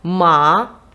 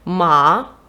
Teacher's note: цей тон другий тон дуже схожий на питальну інтонацію